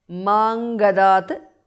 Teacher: Anuswara changes to nga there